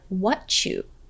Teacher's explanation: listen for the CH sound when you link the words what and you so it sounds like what you hear it what you I